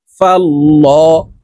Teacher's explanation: লাম খারা জবর ল শব্দের আগের হরফে জবর অথবা পেশ হইলে এই লামকে ল অর্থাৎ মোটা করিয়া পড়িতে হয় তো এখানে দেখুন আল্লাহ শব্দের আগের হরফে জবর আছে এই লামকে